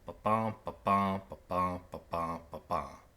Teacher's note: the 2-syllable pair where the stress is on the second syllable. Ba-bum, ba-bum, ba-bum, ba-bum, ba-bum is what an iambic pentameter line sounds like.